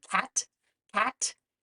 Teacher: the tongue touches the back part of the roof of the mouth and the air is blocked and then it's released in a burst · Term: C sound, k sound